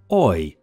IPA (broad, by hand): ɔɪ